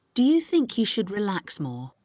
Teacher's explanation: the stress is on think and relax more